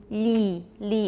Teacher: So for E, you'll say li, li, and that will be quite palatalized.